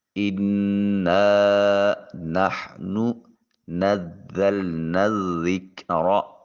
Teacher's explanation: اِنَّا نَحْنُ نَزَّلْنَا الذِّكْرَ، یہاں جب نون کو ذال کے ساتھ ملائیں گے تو یہاں پھر حرف مدہ کے طور پر الف ادا نہیں ہوگا بلکہ نون کو ذال کے ساتھ ملا کر جب ادا کریں گے تو یہ مدہ ختم ہو جائے گا